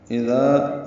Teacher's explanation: اذا حمزہ اقصی حلق سے ادا کریں گے، اس میں صفت جہر کی ہوتی ہے، دال کو نرمی سے پڑھیں گے، ذا الف مدہ ہے، 2 حرکات لمبا کریں گے۔